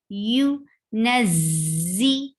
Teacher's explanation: There is buzzing sound of za.